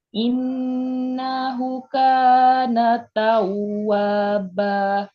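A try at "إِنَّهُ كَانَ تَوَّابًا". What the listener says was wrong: Tinggal hu-nya. hu-nya panjang. Kalau dhammahnya terbalik, panjang. Hu, kana. Ba juga sama. Tawwaba. Ba.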